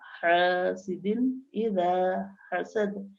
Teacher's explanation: دال دو زیر دن کے بعد حمزہ آیا ہے تو اس تنوین کی آواز کو جلدی ظاہر کر کے ادا کریں گے